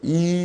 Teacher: 대표적인 것이 이모음이죠. 이 하면 혀가 앞쪽으로 가면서 나면 전설모음이라 하고